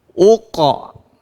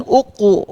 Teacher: Pendapat kedua, secara mutlak, ya, secara mutlak bunyi pantulannya adalah bunyi fathah. Baik sebelumnya itu berbaris kasrah, dhammah atau fathah, maka mutlakkan bunyi pantulannya adalah fathah.